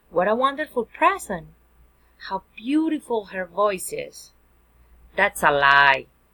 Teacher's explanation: Exclamatory sentence, falling intonation.